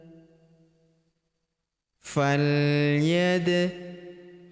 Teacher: Huruf dal berharakat sukun kita pantulkan atau kita qolqolahkan.